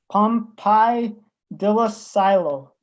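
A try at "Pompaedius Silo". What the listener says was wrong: It's Pompidius Silo, and I'm hearing an L in that first name. So that's why I asked you to repeat it, was just to make sure I was hearing you correctly.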